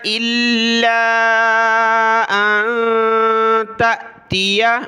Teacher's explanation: لام کو سخت کیا اور کھینچا